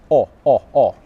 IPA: ɒ